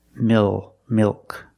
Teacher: It's between a vowel and a consonant. The L is after a vowel but before a consonant. This is also a dark L.